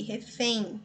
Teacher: o M aqui, tem o sonzinho de I, da semivogal I, refém. Basta você pronunciar que você vai observar.